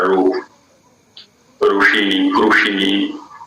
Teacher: दाक्षिणात्य प्रदेशों में प्रायः री का रू उच्चारण होता है